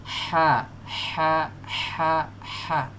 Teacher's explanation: ini keluar dari tenggorokan bagian tengah